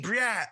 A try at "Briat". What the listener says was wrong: Yeah, the only thing, so I usually, it's just that you don't pronounce the T at the end.